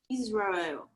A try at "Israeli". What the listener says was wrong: Okay, now just say Israeli. Just add an I. Yeah, Israel, Israel, Israeli. Yes, Israel, Israeli. It's just one more letter. It's like a suffix. break at the prefix at the suffix. So Israel, Israeli.